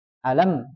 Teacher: contohnya di ayat yang pertama alamah itu kan ada mim tuh mim berharakat sukun cara bacanya adalah dialirkan sedikit tidak boleh terlalu panjang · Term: bainiah